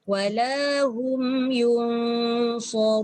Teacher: Hum tu tak dengung, yun tu dengung. Dan bila dengung ni mesti dibaca dengan tidak jelas.